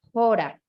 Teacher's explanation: si tuviera el espíritu fuerte, como una coma invertida, se pronunciaría jora, ¿cierto? Jora, como una jota suavecita